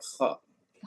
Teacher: Kho di tenggorokan, Pak. Pangkal tenggorokan